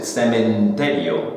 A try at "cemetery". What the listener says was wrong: There's no N there. Cemetery.